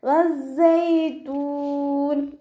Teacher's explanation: വാവ് ഉച്ചരിക്കുമ്പോൾ ചുണ്ടുകളൊന്ന് സർക്കിൾ ചെയ്ത് കൊടുക്കുക. സായ്ക്ക് ശ്രദ്ധ വന്നിട്ടുണ്ട്, അപ്പോൾ 2 ഹർഫുകൾ ഉച്ചരിക്കുന്ന കനം കൊടുക്കുക